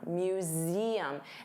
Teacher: So notice you have that voiced Z sound, museum.